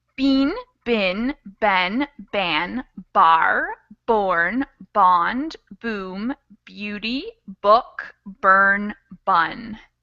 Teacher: we start kind of with these small vowel sounds in the front of our mouth, and it gets wider and more open and farther to the back of our mouth. It's a progression.